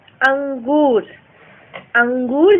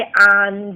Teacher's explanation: अनुनासिक उच्चारण हवा नाक और मुंह में दबाव के साथ बाहर निकलती